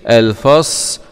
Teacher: صاد سكون مع الصفير